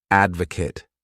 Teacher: This word has three syllables and the stress is on that first syllable